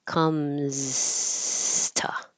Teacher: you kind of start losing your voicing at the end of the Z